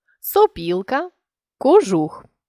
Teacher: не наголошений о вимовляємо із наближенням до U якщо наступний склад має наголошені і чи у сопілка кожух це стосується лише ненаголошених голосних в коренях слів у